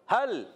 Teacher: हल, हा का मखरज हलक के नीचे वाला हिस्सा, लाम को हिलाना नहीं है, लाम का भी एक मखरज है। लाम ज़बान का किनारा, दाहिक से सनाया तक के मसूड़ों से अदा होता है लाम।